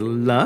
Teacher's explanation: it's very easy it's dental it's voiced it's unaspirated